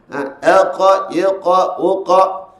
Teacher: sifat huruf qaf apabila ia mati, naklah ia mengeluarkan sifat, iaitu detakan ataupun lantun. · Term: qalqalah